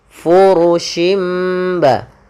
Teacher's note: Fu pada lafal huruf fa memiliki salah satu sifat, yaitu sifat hamasnya, yang dimana harus mengalir nafasnya. Fa jangan dibaca dengan purushim, tapi dia furushimba.